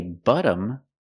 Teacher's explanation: I'm using the short uh sound like cup and up